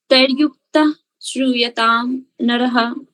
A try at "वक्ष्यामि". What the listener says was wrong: अत्र जस्ट वन small mistake. वक्ष्यामि आप वे बोल रहे हो, वे नहीं है, वा।